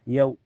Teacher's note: ada waw sukun sebelumnya harokat fathah dia dibaca dilunakan saja, lembut ya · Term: harfulin